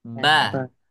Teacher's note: huruf ba itu adalah ketika bibir kita menempel.